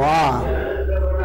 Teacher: विव्रत में एकदम आ मुंह खुलेगा, भट्टा बन जाएगा मुंह का · विव्रत में पूरा मुंह फटता है